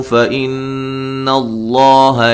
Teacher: نون مشدد پہ غنہ ضروری ہے، لفظ اللہ کو موٹا ادا کرنا ہے، پہلے زبر ہے.